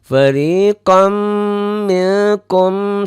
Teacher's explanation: Ini gunnahnya mim disebabkan oleh tanwin jadi idgham bigunnah